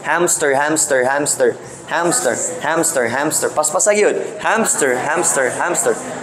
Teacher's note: you insert a phon or a sound in the middle and that's called epenthesis